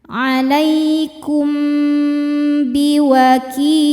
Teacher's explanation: Cara bacanya mim didengungkan, ditahan dulu ya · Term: ikhfa syafawi